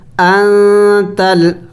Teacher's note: نون ساکن ہے اخفا کرنا ہے